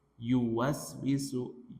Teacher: Yu itu pertengahan lidah dengan langit-langit.